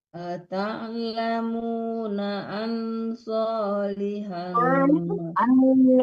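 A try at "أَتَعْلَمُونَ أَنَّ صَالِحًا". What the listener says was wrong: Kenapa nggak dimatikan nunnya? Kenapa dimatikan nunnya? Tasdid bukan mati ya. Ata'lamuna anna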